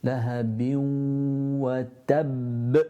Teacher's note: the ba joins on to the wa, and you pronounce the wa from the lips